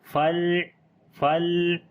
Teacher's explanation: لام کے اوپر صفت توسط کریں گے, ایک دم آواز کو بند بھی نہیں کریں گے اور جاری بھی نہیں کریں گے, بلکہ درمیانی پوزیشن رہے گی, جیسے فل.